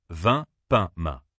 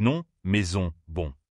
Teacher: C'est un son que tu prononces avec le nez. L'air ne sort pas seulement par la bouche, mais aussi par le nez. Mets ta main sous ton nez et tu sentiras un petit souffle d'air quand tu dis ces sons. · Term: son nasal